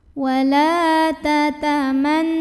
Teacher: lamnya kita panjangkan 2 harokat saja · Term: mad tabi'i zahiri